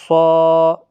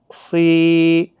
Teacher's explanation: اب صاد مستعلیہ کا حرف ہے، موٹا پڑھنا ہے، صاد الف زبر صا، صاد واو پیش سو، صاد یا زیر صی۔